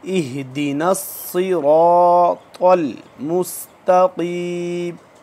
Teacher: स्वाद भी मोटा है, रॉ भी मोटा, त्वा भी मोटा, ये तीनों अल्फाज मोटे पुर पढ़े जाएंगे।